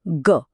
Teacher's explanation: હવે બોલો ગ અનુભવ્યું હોય કંપન ગળામાં એકદમ સ્પષ્ટ ધ્રુજારી થઈ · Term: ઘોષ